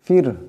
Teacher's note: ফিরহু ফা রা সাকিন, এর ডাইনে জের আছে, রাকে পাতলা আওয়াজে পড়তে হবে